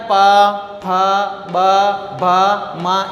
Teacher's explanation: इनका उच्चारण जब भी करते हैं तो हमारे दोनों लिप्स टच होते हैं और फिर दूर होते हैं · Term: ओष्ठ्य वर्ण